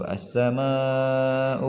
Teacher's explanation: ada ma bertemu dengan hamzah u ya. Maka dibaca panjang 6 harakat. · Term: mad wajib muttasil